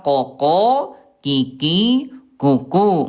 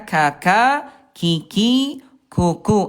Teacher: Nah, ini Bunda hati-hati, ini tempatnya sama-sama di pangkal lidah tapi punya sifat yang berbeda. Huruf Qaf dia jahar tidak ada udara dan Kaf ada udara. Ya koko, kiki, kuku nggak ada udara.